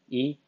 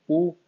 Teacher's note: जिनके उच्चारण में मुख द्वार लगभग बंद ही रहता है, बिल्कुल बंद, बिल्कुल क्लोज, उसको कहेंगे आप संवृत।